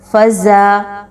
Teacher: فزا، آگے دیکھیے زا پر زبر ہے اور اس سے پہلے اس کے اگلا جو حرف ہے الف وہ خالی ہے، تو جب بھی آپ کو الف خالی اور اس سے پہلے والے حرف پر زبر ملے تو وہ الف مدہ کہلائے گا۔ اس کو 2 حرکت کے برابر لمبا کر کے پڑھتے ہیں۔ · اس کو آپ نے دال کی طرح نہیں پڑھنا بلکہ سختی کے ساتھ اور مضبوطی کے ساتھ بزنگ ساؤنڈ نکالتے ہوئے۔